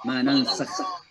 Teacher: Kha itu dari tenggorokan bagian atas.